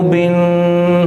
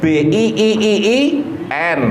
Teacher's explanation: ketika membaca mubin ini tidak dengung